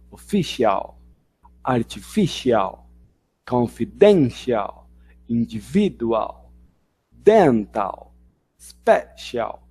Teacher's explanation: a sílaba forte está sempre antes aqui desse C-I-A-L